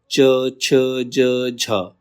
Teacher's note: च, छ, ज, झ, ये तालव्य ध्वनियाँ हैं